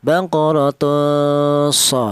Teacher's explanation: antara dengung dan samar itu pertengahan. Tidak terlalu dengung juga tidak terlalu samar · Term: ikhfa